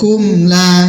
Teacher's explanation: Kumla izhar syafawi, mim sukun bertemu selain mim ba, jelas bacanya